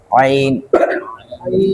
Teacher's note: حلق کے درمیان والے حصے سے ادا ہوتا ہے